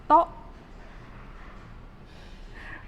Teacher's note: And your lips, you have to make it round.